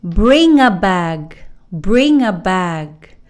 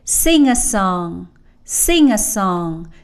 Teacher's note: So, you hear that nga in the middle. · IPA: /ŋ/